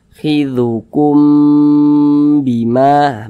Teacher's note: Nah, jadi kalau ada huruf mim sukun berjumpa dengan huruf ba, maka hukumnya adalah ikhfa syafawi. Nah, maka karena dia ikhfa ya, berarti kita baca dengung. Nah, jadi kita tahan suaranya, kita panjangkan.